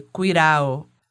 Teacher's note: O D intervocálico, ele também pode ser pronunciado como um TEP. Um R-TEP é aquele R que a língua dá só uma batidinha rápida aqui no céu da boca, sabe?